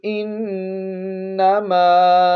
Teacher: نون پر شد ہے، غنہ کرتے ہوئے پڑھیں گے